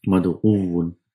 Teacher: So one of the waw will lose vowel sign and it gets assimilated. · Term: assimilation of the letters